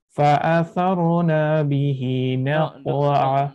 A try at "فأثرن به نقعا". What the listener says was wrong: Don't let it be أثرنا. أثرن به.